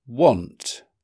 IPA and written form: wɒnt (want)